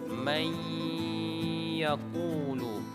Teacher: Yang betulnya may yaqulu, dengan cara memasukkan dan dengan cara mendengungkan suara. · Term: idgham bi gunnah